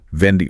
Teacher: Make sure you get that V sound. The vibration.